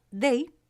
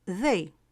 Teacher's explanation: La D de day es una oclusiva dental sonora, como la primera D de la palabra dedo. Y la D de they es un sonido fricativo interdental sonoro, como la segunda D de dedo.